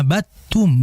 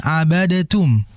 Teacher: langsung dimasukkan ke huruf yang kedua dan meniadakan huruf yang pertama. Makanya dibaca abadum bukan abadtum ya. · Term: idgham kamil